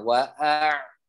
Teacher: huruf ain ada di tenggorokan tengah.